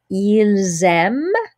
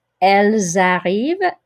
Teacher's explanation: The S carries over, the sound of the S carries over and makes a Z sound right there. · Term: liaison